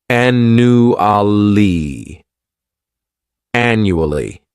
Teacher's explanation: This word has four syllables and the stress is on that first syllable. The second syllable, it's like you're just saying that letter u and the third syllable has that schwa annu ali annually.